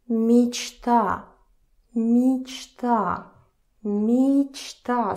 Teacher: Again A is stressed here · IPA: [мичта]